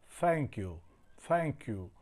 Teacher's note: આપ જ્યારે કોઈને થેન્ક યુ એવું કહો છો ત્યારે થ બોલતી વખતે આપણી જીભનું ટેરવું છે આ આગળના દાંતની પાછળના ભાગમાં અડતું હોય છે. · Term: દંતવ્ય ઉચ્ચાર